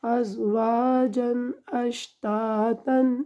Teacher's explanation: یہاں پہ نون تنوین ازواجن میں غنہ نہیں کیا، کیونکہ آگے حروف حلقی میں سے حمزہ آ رہا ہے